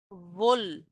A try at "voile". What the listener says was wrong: নো এটা ভোল না, দেখেন ভোয়াল কি লেখা আছে, ভোয়াল মানে হচ্ছে ওই যে সেইলিং করা, সমুদ্রে সেল করা।